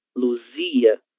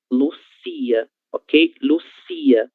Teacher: As cordas vocais não vibram nesta letra, na letra S, certo? Então, a letra Z, ela terá um som diferente da letra S, beleza?